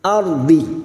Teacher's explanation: ra sukun yang didahului fathah kita baca tafkhim